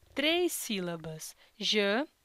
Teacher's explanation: Na palavra janela podemos também identificar três sílabas, ja-ne-la. E nesta palavra, a sílaba tônica é a sílaba ne